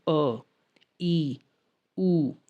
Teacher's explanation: ये मूल स्वर हैं और ये ह्रस्व स्वर हैं क्योंकि इनके उच्चारण में दीर्घ स्वरों से कम समय लगता है